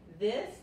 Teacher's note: Saben que hay que meter la punta de la lengua o la lengua entre los dientes frontales para pronunciar la TH en inglés. Es this, y la I aquí no se pronuncia tanto como la I española